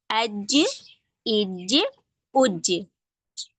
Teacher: जीम हम अदा करते हैं तो जुबान का बीच का हिस्सा तालू से लग जाता है।